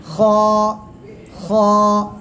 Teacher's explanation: গলার শেষ ভাগ থেকে আমরা এই অক্ষরটা উচ্চারণ করব। খ। এক আলিফ টান হবে, মোটা আওয়াজে উচ্চারণ হবে।